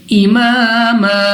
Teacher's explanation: 2 زبر کی تنوین ہے، اس کو ہم الف سے بدل کر پڑھیں گے